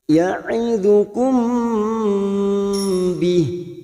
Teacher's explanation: mim sukun bertemu ba, ikfa safawi, samar di bibir